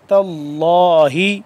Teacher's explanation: لفظ اللہ پر کر کے پڑھنا ہے کیونکہ اس سے پہلے زبر ہے